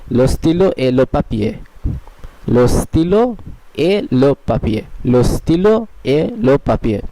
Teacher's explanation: তের পরে যদিও কোনো জায়গায় ভাওয়েলের প্রচলন দেখা যায় তবুও তেটা সাইলেন্ট থাকবে।